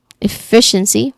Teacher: Pronunciation wise, the second syllable is stressed.